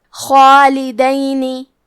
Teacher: کلمت خالدینی میں خا کو اور مد الف کو دونوں کو تفخیم سے پڑھنا ہے، حرف دال پہ زبر ہے تو ہم دال کو زبر سے پڑھیں گے، خالدینی۔